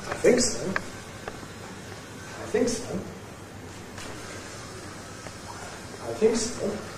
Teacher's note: There we’ve got one accent on the word, “think”. It’s a Fall-Rise.